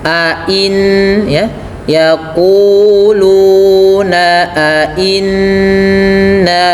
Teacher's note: terdapat bacaan ghunah yang di mana bunyinya ditahan n dua harakat